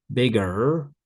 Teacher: Americans often do pronounce the R so for them bigger so the ER is an R consonant